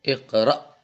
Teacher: Yang pertama dilihat dari jaroyanu an-nafas, jaroyan al-hawa, mengalirnya nafas atau mengalirnya udara, maka hamzah itu tidak mengalir. Ya, ketika kita baca iqra, akhirannya itu justru dia kayak mentok berhenti.